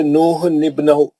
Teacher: تنوین کے بعد اگر حمزہ وصلی ہو اور اس کے بعد آنے والا حرف ساکن ہو تو تنوین کے نون کو زیر دیتا ہے، کیونکہ حمزہ وصلی درمیان میں گر جاتا ہے. جیسے نوح نبنہ، اس نون کو نون خطنی کہتے ہیں.